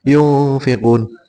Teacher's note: ikfa membacanya pakai ng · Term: ikhfa